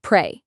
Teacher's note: pay attention to that R sound. Pull your tongue back. Pray, not play.